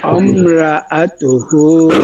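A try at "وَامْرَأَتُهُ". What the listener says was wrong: অমরা না, অম র, র র, রা বলা যাবে না। বলবো, র না, অমরাআতুহু,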